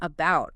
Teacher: common vowel reductions like the a in about often becoming that weak uh sound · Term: schwa